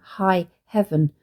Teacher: the alliterated aspirated h sound in high heaven which evokes the mingling of breaths in a kiss